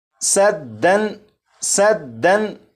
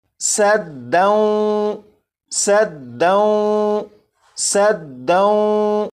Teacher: تنوین کے بعد واو ہے. جب تنوین کے بعد واو ہے تو یہاں پر ادغام ہوگا اور ادغام کے قاعدے کے مطابق یہاں پر غنہ بھی کریں گے. جیسے یہ لکھا ہوا ہے سدن سدن، لیکن ادغام کے قاعدے کے مطابق اسے پڑھیں گے سدوں سدوں سدوں.